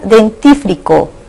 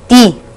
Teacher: En la palabra dentífrico o crema dental, ¿cuál es la sílaba tónica? Ti, porque sobre ella recae la mayor fuerza de voz. Y las demás, den, free y co, son sílabas átonas.